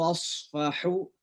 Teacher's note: dari tengah tenggorokan kita ya, ain dengan ha satu tempat keluar, baik ain dan ha satu tempat keluar ya.